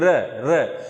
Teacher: प्रकंपित आप र कहेंगे, देखिए आपका जीभ जो है वो कंपन कर रहा है, नहीं तो र बोल के देख लीजिए, र तो जीभ कंपन कर रहा है ना, इसीलिए इसे प्रकंपित या लुंठित कहते हैं